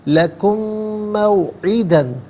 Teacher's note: لکم، موعدن، لکم میں میم ساکن ہے، اسے موعدن کی میم کے ساتھ ملا کر میم کی آواز کو غنّے کے ساتھ ادا کریں گے